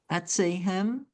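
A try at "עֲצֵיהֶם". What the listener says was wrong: The first one's an E. Etza. Etza.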